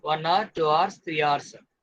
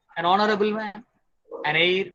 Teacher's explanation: So there are some words begin with H, but the letter H is silent. It sounds like a vowel in the beginning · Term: silent H